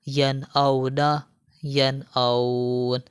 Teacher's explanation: یہاں پر دیکھیں نون ساکن ہے اور نون ساکن کے بعد حمزہ آ گیا ہے، تو یہاں پر ہم غنہ نہیں کریں گے۔ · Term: اظہار حلقی